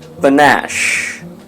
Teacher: The stress is on the second syllable, which means the second syllable would sound louder than the first one.